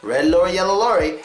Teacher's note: it should not be touching on the r sound but it should be touching on the L Sound